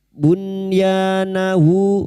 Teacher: Nun sukun dibaca jelas tanpa mendengung. Bunyahu bertemunya nun sukun dengan huruf ya atau wawu disebut dengan izhar wajib.